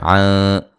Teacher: یہاں نون ساکن کا باریک اخفا ہے